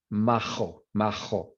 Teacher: So if you have a J or a G before an E or an A, it's more of an H sound. If you're in Madrid, it's really like a uvular sound.